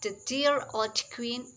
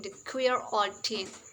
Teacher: a kind of metathesis that involves sounds or sound clusters switching position with each other. A crossword, and this results in memorable phrases such as the dear old queen becoming the queer old teen. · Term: spoonerism